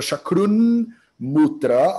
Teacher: Então, chakrut com mutra, quando você junta um t Holland com um m Holland, esse t, que é um dental, ele é dental, ele converte para o anunásica dental, que é o na. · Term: sandhi consonantal